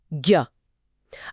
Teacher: जब हम ज्ञ बोलते हैं तो उसमें साफ साफ ग और य की ध्वनि आती है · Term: संयुक्त व्यंजन